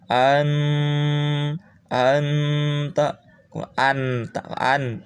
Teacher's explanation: Nah, di sini ada nun, ini tidak boleh pol berbunyi huruf n, tapi harus ada ang-angnya karena ada dengungan.